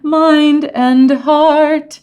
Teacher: with all of those d's kind of following each other d is a semi-voiced consonant